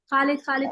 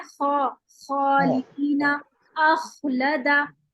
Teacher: तो आप देखेंगे कि आपको बिल्कुल शुरू में हलक जहां पर है वहां पर आपको खरखराहट महसूस होगी। खौ में खरखराहट लाना लाजमी है